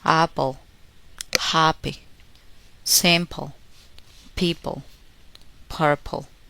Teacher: Don't make the puff of air when p occurs in the middles of a word before a vowel sound.